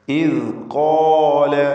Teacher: ഇദ് ഖാല, ഖാഫിനും അലിഫിനും തഫ്ഖീം കൊടുക്കുക.